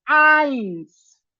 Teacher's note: Y para eso es cuestión de saber cómo es que se pronuncia el número 1 o cómo es que vamos a pronunciar siempre que nos encontremos a una E y a una I. Porque no suena EI, suena AI. Por eso el número 1 es eins y no eins.